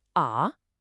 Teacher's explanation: And the fourth tone is a sharp quick drop.